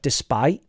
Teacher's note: something like despite, you really need a glottal stop or a T there, because otherwise, it's like, it sounds like despy or despy, and it's a bit confusing there.